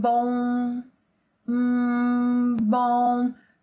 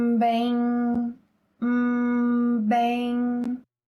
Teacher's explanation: In order to produce them, like this sound and other nasal sounds, the air must escape through your mouth and through your nose at the same time. A useful tip is for you to hum, and as you hum, you say the word. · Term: nasal vowel sounds